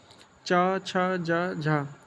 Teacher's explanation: Next है आपका point स्पर्श संघर्षी च, छ, ज झ अब इसमें स्पर्श संघर्षी क्यों बोला गया? क्योंकि यह जो आपका जीभ है वो मुर्धा से लग भी रहा है और उसके बाद यह भी संघर्ष करके आ रहा है। क्योंकि आप बोलेंगे उच्चारण करेंगे तो ये गर्म हवा निकलती है आपके मुंह से।